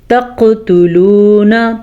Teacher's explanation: قاف پہ قلقلہ ہوگا کیونکہ قاف حروف قلقلہ میں سے ہے، لیکن تاپشتو اس کو تو ہم کھینچ کے نہیں پڑھیں گے، لیکن لام پیش واو لو اسے ہم کھینچ کے پڑھیں گے کیونکہ یہ ہے واو مدہ۔